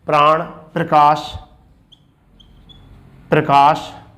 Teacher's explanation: जैसे कंबल में कै के साथ तो मैं हो रहा है, ठीक है, बै अलग हो रहा है, तो कंबल में अलग अलग ध्वनि हो रही है, जबकि प्र एक साथ बोला जाएगा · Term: संयुक्त ध्वनि